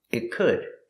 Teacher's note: The T in it is a stop T. Stop the air. It could. Link it to the next word.